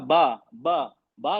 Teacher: दोनों होठ मिल रहे हैं। तो ये आवाज लिप्स होठों से निकल रही है।